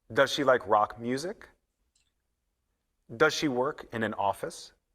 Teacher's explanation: does she we say does she we blend The Sounds together when we blend The Sounds in does she we do not say the z sound in does